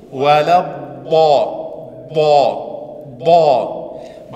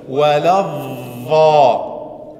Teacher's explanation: Der Unterschied bei ba kommt die Zunge nicht raus.